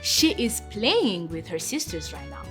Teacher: there's an emphasis on that playing because playing is a verb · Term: sentence stress